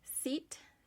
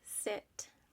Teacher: Tip number 1 comes down to our lips. So when we do the E versus the I sound, we're really talking about tension versus relaxation